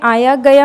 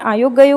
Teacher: आकार बहुला में आया गया होता है, ओकार बहुला में आयो गयो होता है